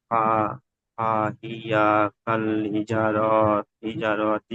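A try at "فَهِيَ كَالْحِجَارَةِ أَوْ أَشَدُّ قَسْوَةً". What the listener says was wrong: র টান হয়ে যাচ্ছে ভাই। হিজারতি আও আসাদ্দু কসওয়া,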